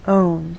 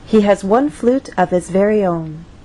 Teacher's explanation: on that final content word our voice will Glide down